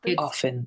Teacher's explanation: There is no T in the word often. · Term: T is silent